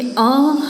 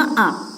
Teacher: जैसे अ ह्रस्व हुआ, हम आ बोलते हैं तो उसको बोलने में हमको ज़्यादा समय लगता है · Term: दीर्घ स्वर